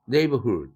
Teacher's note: 이럴 때 hood의 액센트가 오지 않는다